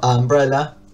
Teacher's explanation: si lo digo rápido, digo a umbrella, como que el artículo ahí se se va desvaneciendo y se pierde